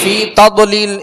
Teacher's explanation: اس کو قلقلہ نہیں کریں گے، یعنی تضلیل جو پڑھ رہے ہیں اس میں جنبش نہ ہو